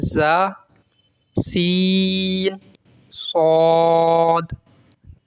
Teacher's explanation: ان 3 حروف زا، سین، صاد کو ادا کرتے وقت سیٹی کی طرح آواز نکلتی ہے، اس لیے ان حروف کو حروف صفیریہ یعنی سیٹی والے حروف کہتے ہیں.